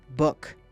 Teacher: Say book. Stop. No Ku at the end.